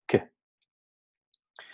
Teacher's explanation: Que está muy dentro de la boca. A pronunciar que vamos a notar cómo el dorso de la lengua, casi la raíz de la lengua, ¿no? Toca la zona velar. Para su articulación, el postdorso de la lengua toca el velo del paladar, cerrando así completamente el paso del aire. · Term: fonema oclusivo velar